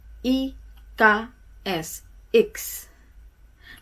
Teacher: Tapi I bukan I ditekan, tapi sedikit I menjurus ke E sedikit saja, begitu. Jadi, I, K, S, X.